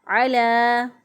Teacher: عین کو وسط حلق سے ادا کیا ، لام کھڑی زبر لا کو ایک الف کے برابر لمبا